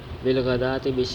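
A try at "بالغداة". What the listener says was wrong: الگ الگ لفظ پڑھنا، اگے پیچھے ملا دینا لفظوں.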